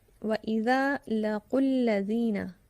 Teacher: اس کو ملا کے پڑھنے میں حرف مدہ ایک الف کے برابر نہیں کھینچا جائے گا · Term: واو مدہ